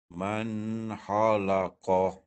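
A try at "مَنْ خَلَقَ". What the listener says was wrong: Tu tak sentuh dia punya, dia kha ni dia sentuh dekat hujung permulaan kerongkong tu. Macam orang buang kahat tu, dia tekan sikit, dia sentuh betul-betul. Sentuh. Itu tak sentuh, itu lalu ha. Guna hujung permulaan kerongkong, jangan guna muncung.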